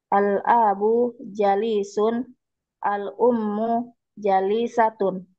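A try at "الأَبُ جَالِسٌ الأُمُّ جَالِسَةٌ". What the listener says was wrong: Ja panjang. Nah, perhatikan panjang pendeknya.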